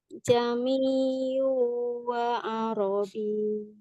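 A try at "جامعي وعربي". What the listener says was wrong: Masih terlalu idhar ya hamzahnya, harus lebih tashil lagi.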